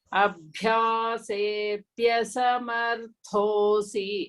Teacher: Bhya is Mahaprana. That is the aspirated one.